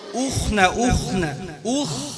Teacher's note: মুখ খুলতে হবে একাঙ্গুলি পর্যন্ত ফাঁকা হবে উখ ঠোঁট গোল হয়ে স্বাভাবিক থাকবে